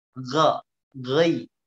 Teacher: Ga, ghai, suaranya yang menebal. Ya, bibirnya nggak usah ikut-ikutan wo